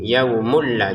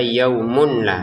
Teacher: Jadi kita masukkan tanwinnya ke lam, terbacanya yaumul la, bukan yaumun la lagi tapi yaumul la. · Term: tanpa dengung